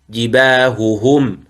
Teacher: ينبغي الحرص على بيان الهاء لأنه حرف خفي